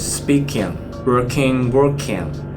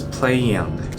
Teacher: there is a very strong Y sound that ends with ying, ING.